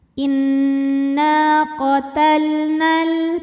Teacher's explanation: Sukun bertemu sukun tidak bisa dibaca, sehingga sukun pertama dilepaskan secara bunyi. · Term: takhalus bil hadfi